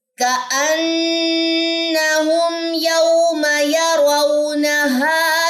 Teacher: میم ساکن کے بعد یا ہے، اٹس مین یہاں پہ کون سا شفی ہے؟ یہاں پہ اظہار شفی ہے، غنہ نہیں ہوگا